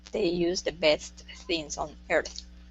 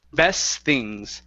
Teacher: connect these two together best things so that t disappears